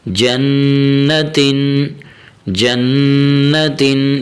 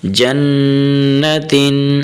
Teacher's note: یہاں حرف نون پر تھوڑا سا غنہ بھی کرنا ہے